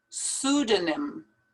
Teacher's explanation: don't pronounce that p at the beginning